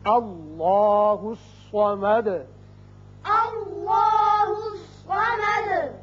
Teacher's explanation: اسی طرح صاد حروف مستعلیہ میں سے ہے، یہ پر ہوگا. اب دال کے اوپر پیش ہے، آیت ختم ہونے کی وجہ ساکن کریں گے اور سکون کی وجہ سے صفت قلقلہ ادا ہوگی